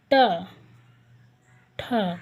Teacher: टा वर्ग ये मूर्धा से बोले जाते हैं। ट, ठ। देखिए आपकी जीभ जो है ना वो मुड़ जाती है और ऊपर मूर्धा में लगती है।